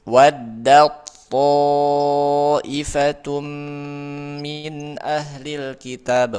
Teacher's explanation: Contoh ini ta ketemu th. Ta tho sama-sama di ujung lidah bertemu dengan pangkal gigi seri atas. Tapi beda sifat. Ta tipis, tho tebal. Nah, si ta masuk ke huruf th. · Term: mutajanisain